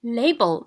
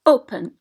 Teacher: in label open stress is on the first syllable